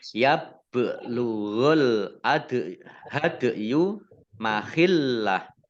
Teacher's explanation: Al-hadiyu alif lamnya alif lam komariah ditandai dengan lamnya dibaca sukun. Kemudian dal sukun bacaan kolkolah ya dibaca memantul. Kemudian mahillah lamnya dibaca double ada tasdidnya. · Kemudian tak fathah berdiri mat tabi'i ya belugho bak sukun bacaan kolkolah dibaca memantul ditampakkan pantulannya